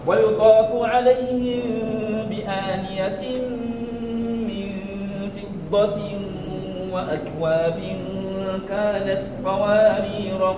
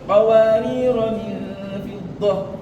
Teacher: Le deuxième qawarir de la sourate Insan, que ce soit passage ou arrêt, on ne le prolonge jamais. Lorsque tu veux t'arrêter dessus, le rôle devient soukoun.